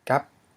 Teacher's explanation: is a rising tone because you have a mid consonant followed by a short vowel and a dead syllable, and that is a rising tone.